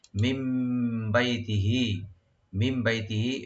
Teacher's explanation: নুন সাকিনটা মিমের সাথে চেঞ্জ করে গুণা সহকারে করব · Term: একলাপ